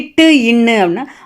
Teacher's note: இட்டு ன்னு ஆகிய இரு மெய்களும் நாவின் நுனி அன்னத்தின் நுனியை பொருந்துவதால் பிறக்கின்றன